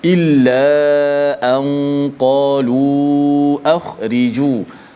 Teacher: Ra yang baris di bawah, bila dilafazkan ra itu, automatik ra tu dibaca dengan nipis. Ri tidak boleh baca ri. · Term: ra yang dibaca dengan nipis